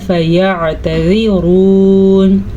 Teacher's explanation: را کو پر پڑھنا ہے کیونکہ را کے اوپر پیش ہے